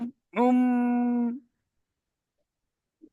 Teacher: আইন মিম পেশ হবে হ্যাঁ, ওমটা একটু গলার ভিতর থেকে বলতে হবে, কারণ আইনটা গলার ভিতর থেকে উচ্চারিত হয়